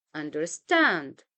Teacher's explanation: we have two unstress syllables followed by a stressed syllable